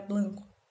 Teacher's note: o rotacismo, que consiste na substituição da lateral L pela vibrante R